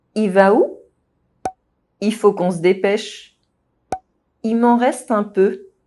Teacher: It happens a lot with subject pronouns il, he, and il, the masculine or mixed they. When the word that follows them begins with a consonant, the L sound is often dropped.